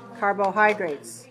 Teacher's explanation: we have the stress on the third syllable